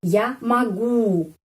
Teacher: O dibaca A karena penekanannya di sini pada huruf U.